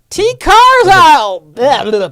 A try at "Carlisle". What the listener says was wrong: Carlisle. Usually the S is silent.